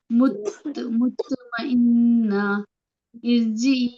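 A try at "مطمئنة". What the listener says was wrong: مطمئن ہاں کی بھی آواز آنی چاہیے.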